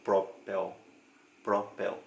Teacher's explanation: última sílaba da palavra é a parte mais forte a sílaba tônica da palavra